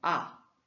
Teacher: le quatrième ton, c'est un ton descendant